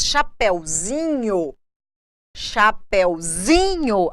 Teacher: a minha tonicidade vai para o Zi mas a sílaba anterior da palavra original ela mantém uma sub tonicidade